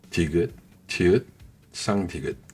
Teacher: Ce sont des sons produits avec la langue qui touche juste derrière les dents du haut. Exactement là, vous mettez la langue pour dire de ou te en français. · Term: alvéolaires